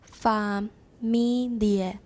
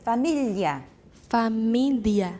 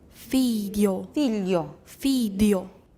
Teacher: When you see GL, that makes it into a palatalized L.